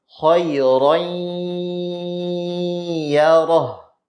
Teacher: jalur dari makhraj huruf ya itu dari tengah lidah kemudian makhroj dengung mahroji guna yaitu dari khaisyum Hoi younink iyaroh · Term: gunnah